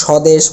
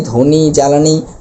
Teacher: শব্দের শুরুতে যদি ব্যঞ্জনের সাথে বফলা যুক্ত থাকে তাহলে সে বফলার কোন উচ্চারণ হয় না